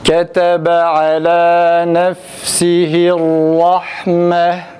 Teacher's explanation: Ra harfi tam A sesiyle fakat uzatmadan. · Ra biraz daha kalın ve sıfatı A sesi çıkararak okumamız gerekir. Fakat uzatmadan rahme değil.